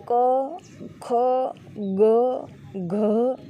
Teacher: તમે ક, ખ, ગ, ઘ આ બોલો છો ને ત્યારે હવા ઘર્ષણ અનુભવે છે.